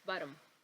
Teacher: We have a flat T followed by the schwa but you don't need to try to make the schwa sound. Remember, just go straight into the position for the M, because if you try to pronounce the schwa, it will sound like bottom, and we don't need that.